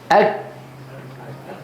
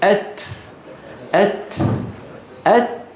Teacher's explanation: الكاف والتاء شديدتان في أولهما، مهموستان في آخرهما. يعني في أول الكاف ينغلق المخرج أك.